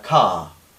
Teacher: como palabra aislada sería car, una A larga, abierta y sin R. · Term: la R desaparece